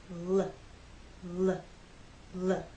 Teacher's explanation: we use our voice you will feel vibration here when you make the L Sound